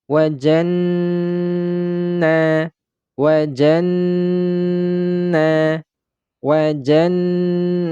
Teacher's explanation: huruf nun yang bertasdid ini memiliki tingkatan guna yang paling tinggi gunanya dia maksudnya gunanya adalah paling lama